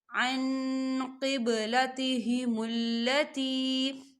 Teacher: ما وَلَّاهُمْ عن قبلتهم التي، عن قبلتهم التي، یہاں دیکھیں عن نون ساکن ہے، نون ساکن کے بعد قوف آ رہا ہے اور قوف جو ہے اخفا کا ورڈ ہے تو یہاں پر اخفا ہوگا، ہم نون ساکن کی آواز کو ناک میں چھپائیں گے